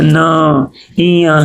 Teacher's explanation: नासिक का उच्चारण यानी नासिक यानी नाक से इसका आवाज निकलता है